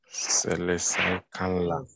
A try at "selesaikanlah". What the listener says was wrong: No, not kanalah, but kanlah. Selesaikanlah. Selesaikanlah. Not saya, not selesai. But selesaikanlah.